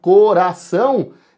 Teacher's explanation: Para lembrar, ó, se a gente pegar a palavra coração, esse ão fica junto, formando um bom e velho ditongo, onde o A é a vogal e o O vai ser a semivogal